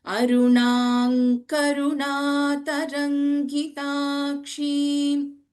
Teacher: since Anuswara and Ka, the consonant Vargiya Vyanjana is there, the fifth letter of Kavarga will replace the Anuswara